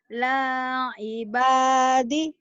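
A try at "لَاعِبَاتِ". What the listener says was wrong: Salah. Kok jadi di sih? Itu kan tak.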